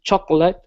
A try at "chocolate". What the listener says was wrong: Okay, let's go to chocolate right here. Instead of saying chocolate, okay, this O, the second O is silent. It's chocolate. Chocolate.